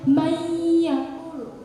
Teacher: Tapi karena nun mati bertemu dengan ya, yang dihukumi dengan idgham biguna, dibaca dengung, ditahan 2-3 harokat, itu bacanya mayyakulu. Jadi di hidung kita tuh ada kayak getar-getar gitu, karena ada dengungnya